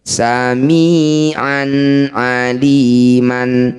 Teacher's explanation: Fathah tanwin bertemu ain disebut bacaan izhar halqi. Cara bacanya bunyi fathah tanwin an. Baca dengan jelas tidak usah dengung. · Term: idhar halqi